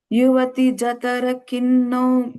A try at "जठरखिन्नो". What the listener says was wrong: I think you're saying tha. You're saying Jathara. You're saying tha. You're saying is tha. Jatharakinno.